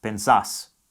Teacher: To get the regular present tense vos conjugations, you remove the final R from the infinitive form and add an S in its place. The stress falls on the final syllable.